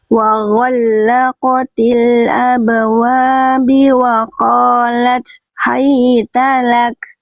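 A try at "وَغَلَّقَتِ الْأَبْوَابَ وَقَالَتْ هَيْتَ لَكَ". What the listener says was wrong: Oke, bukan abwabi tapi abwaba. Nah, ya harokatnya fathah di atas ya.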